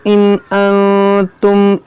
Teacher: نون ساکن کے بعد حمزہ ہے، یہاں پر اظہار ہوگا